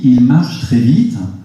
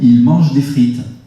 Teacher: Le ch et le je, sosie, point d'articulation exactement pareil, la seule différence, vibration des cordes vocales, invisible. · Le a de marche et le en de mange, un seul trait distinctif qui est la nasalité invisible.